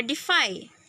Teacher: the obstruction of the air stream is made by the top teeth touching the lower lip